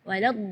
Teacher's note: huruf dhad itu keluarnya dari pinggir lidah maupun yang kanan ataupun yang kiri atau dua-duanya